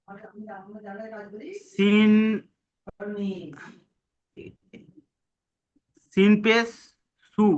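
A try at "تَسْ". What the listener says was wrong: জি, সিনের উপর সাকিন আছে, তো আর সিনটা একসঙ্গে করতে হবে। তো আলিফ সিন যাবার তস, তীর তস, বলুন। তীর তস।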